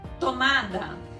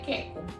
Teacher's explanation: ela troca alguns sons, principalmente os sons de ponta da língua com o dorso da língua. Então a criança vai falar o som do t, ela faz o som do c.